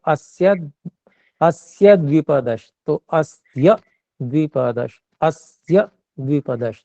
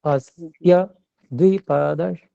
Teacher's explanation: य जी पे दबाव दिया और आधे क्षण के लिए रुके।